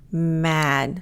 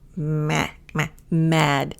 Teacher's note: Now this A, especially for the American pronunciation, it's going to be kind of nasal. So if you want to check if you're putting the air in the right area, if you hold your nose, you should feel a little bit of pressure.